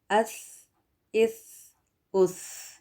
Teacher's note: सा में सीन की या एस की साउंड नहीं आएगी इसको बारीक पढ़ना होता है और इसमें हवा का बहाव जो जो है उसको जारी करना चाहिए